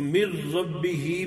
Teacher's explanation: ادغام مع الغنہ یہ ان چار حروف میں یا نون میم واو یا نون، یہ جو لام اور را ہے اس میں غنے کی آواز ختم ہو جاتی ہے، نون کی آواز ٹوٹلی طور پہ ختم ہو جاتی ہے، اور یہ لام اور را کی آواز جو ہے وہ نمایاں ہو جاتی ہے · من ربہ میں نون کی آواز بالکل ختم ہو گئی ہے، اس کو من ربہ نہیں پڑھ سکتے، من ربہ ملا کے پڑھیں گے۔